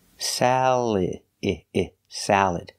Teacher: just make sure you put the stress on the first syllable